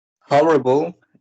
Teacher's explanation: i count three syllables and i think the stress is in the first one